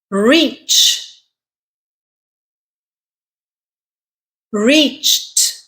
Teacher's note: Ch is an unvoiced consonant. So you add a t sound.